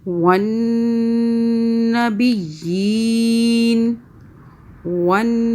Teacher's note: نون مشدد ہے، ہم یہاں پہ غنہ کریں 2 سیکنڈ کا